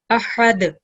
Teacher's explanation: Remember, dal is a qalqala letter. When you have dal with the sukoon, you produce a jerking sound.